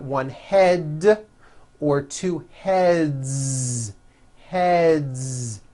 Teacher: Another word, head, ends with a voiced D, d, d.